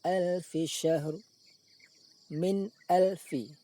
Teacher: menampakkan kejelasan bunyi nun sukun, tidak dengung, juga tidak samar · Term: izhar halki